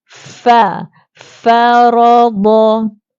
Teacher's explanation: fa termasuk dalam huruf hamas, terlepas angin.